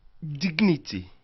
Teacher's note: la combinaison de G et N, qui fait un son en français, donne plutôt deux sons de consonnes combinés et non le son Y du français qui n'existe pas en anglais.